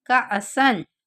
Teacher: काफ के साथ अलिफ है, उसके ऊपर जज़म है, तो हम इस काफ को झटका देकर पढ़ेंगे। काफ अलिफ का, सीन अलिफ दो ज़बर सन, का असन।